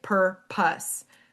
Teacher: per is stressed and pus is not. So the long O in pus changes to a schwa and the syllable is pronounced pus, right?